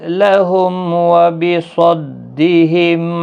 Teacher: میم ساکن کے بعد واو اظہار شفوی ہوگا